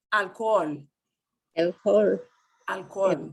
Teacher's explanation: The double O will not be like pool, cool. It'll be O. O, drawn out.